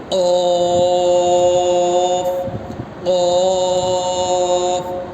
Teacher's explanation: قوف کو ہمیشہ موٹا پڑھنا ہے